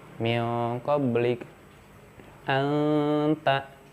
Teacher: Ini tidak sampai ke ngangingu, cukup samar aja, nggak jelas mau nyebutin nun atau tanwinnya.